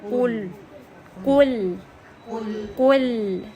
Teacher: ہم نے اس کو قاف کو ہیوی کرنا ہے، لام کو لائٹ کرنا ہے